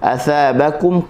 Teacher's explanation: Fa athabakum, athabakum, huruf tha hujung lidah di hujung gigi atas. Athabakum, huruf ba syafatain, asalnya tutup, kita buka ba, huruf yang nipis, buka mulut sambil nak senyum